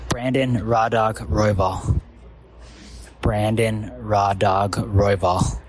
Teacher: we're just looking for that first syllable to be emphasized